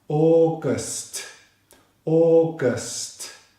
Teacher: It's a two syllable word stress on the second syllable.